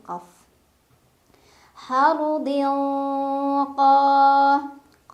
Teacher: cara bacanya tanwin kasrah dimasukkan ke Q sambil dengung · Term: ikhfa